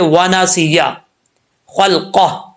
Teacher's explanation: خا حروف مستعلیہ میں سے ہے، پر پڑھا جائے گا